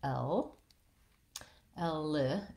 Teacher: a dark l there where i'm uh lifting the front of my tongue behind my teeth and keeping the back of my tongue down